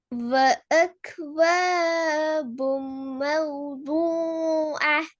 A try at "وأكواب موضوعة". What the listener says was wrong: யார் அது ரெண்டுலயும் கொஞ்சம் குறைங்க நான் கொஞ்சம் கூடுது அக்வாபும் மௌதூஆ என்றது அந்த நீட்டுறது கூடு கொஞ்சம் குறைக்கணும் وأكواب